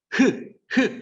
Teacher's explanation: 그래서 연국의 음. 흐 하면 얘는 혀가 가만히 있고 목청만 울려서 나는 소리야.